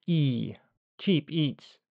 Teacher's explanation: old-fashioned RP is normally very monophthongal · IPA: /iː/